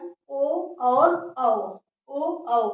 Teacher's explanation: ओ और औ ये कहाँ से निकल रहा है, तो कंठ और ओष्ठ से निकल रहा है। क्या, ओ और औ, ओ औ बोल कर देखेंगे तो कैसा, जैसे जैसे मुंह का आकार बनता जाए समझो कि वहां से वो वर्ड निकल कर आता है।